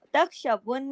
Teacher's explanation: یہ نون پہ تشدید کی وجہ سے غنہ ہو رہا ہے